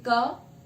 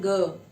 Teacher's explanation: आप देखेंगे का में हमें कम कंपन महसूस हो रहा है, ग में ज्यादा हो रहा है।